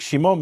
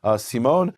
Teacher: Greek doesn't have a sh sound, so it becomes a S.